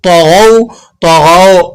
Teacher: واولین کو نرمی سے ادا کیا جاتا ہے، کھینچا نہیں جاتا، جھٹکا نہیں لگایا جاتا، مجھول نہیں پڑھا جاتا.